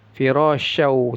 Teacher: tanwin bertemu wau idgham bighunah dimasukkan lalu didengungkan masuk dia tanwinnya ke wunnya jangan ada ee iya masuk ke